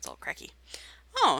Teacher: a little bit of vocal fry